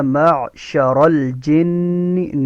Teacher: نون یہاں پہ مشدد ہے، نون میں غنہ ہوگا